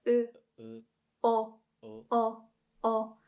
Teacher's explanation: So you can kind of feel that the tongue is going backwards.